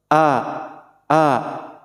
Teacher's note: Hamzah dan ha ini makhrijul hurufnya min aqsal halqi, yaitu dari pangkal tenggorokan